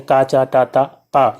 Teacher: किसी न किसी स्थान को छू करके जो है हवा निकलती है झटके के साथ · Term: स्पर्श व्यंजन